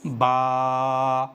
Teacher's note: तो अंदर के जो होठों के हिस्से हैं दोनों के वो मिलने से बा अदा होता है